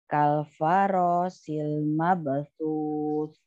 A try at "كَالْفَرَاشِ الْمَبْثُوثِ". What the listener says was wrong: Lagi ya di huruf sya-nya ya. Farashil. Ah, di ba-nya mab.